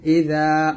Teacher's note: জালের উচ্চারণটা জিহ্বার আগা সামনের উপর দাঁতের আগা সঙ্গে লাগাবেন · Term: জাল উচ্চারণটা